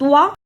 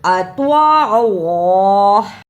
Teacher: توا کی صحیح آواز نکالنا، توا کو نکالنے کا طریقہ، زبان کی نوک کو سامنے اوپر کے دو دانتوں کی جڑ سے لگائیں اور بولیں توا